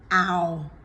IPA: æʊ